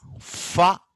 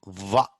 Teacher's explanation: almost same place, but one is voiceless and another one is voiced.